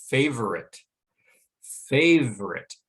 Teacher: that first syllable receives the primary stress and because of that the second syllable is quite weak and it's so weak that most native speakers of english when